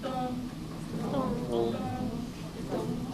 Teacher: And there's no pitch fall. So you stay high.